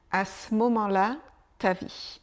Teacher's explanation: le E de ce disparaît à ce moment à ce moment